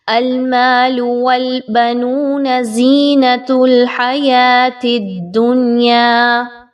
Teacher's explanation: جہاں پر الف مدہ ہے اس کو 1 سے 2 الف کے برابر، جہاں پر واو مدہ ہے اس کو بھی 1 سے 2 الف کے برابر، اور سمپل زبر زیر پیش کو آپ نے بہت کم لینتھ میں پڑھنا ہے، زیادہ کھینچ کے نہیں پڑھنا۔